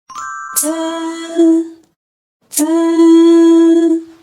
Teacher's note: the tip of the tongue extends flatly, touching the back of the upper teeth. Pause your breath briefly, then slightly lift the tongue to form a small gap, enabling the air to push out. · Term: z